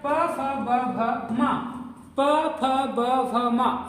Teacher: ओष्ठ कहने का मतलब है ये दोनों जो ओंठें हैं हमारी उससे जिसका उच्चारण करते हैं उसको बोलते हैं।